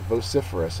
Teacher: it is an adjective second syllable is accented